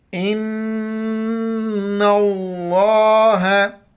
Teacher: नून पर शद है, गुन्ना करेंगे, नाक में आवाज़ छुपाएंगे